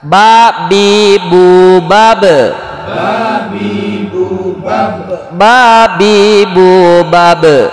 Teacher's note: mim, ba dan waw dari syafatain, bibir dua, bagian atas dan bagian bawah